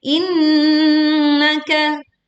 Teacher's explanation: Insanu, sa-nya dibaca 2 harokat panjangnya. Innaka, tasydid di sini nunnya, maka dibaca dengan dengung yang sempurna, tidak tergesa-gesa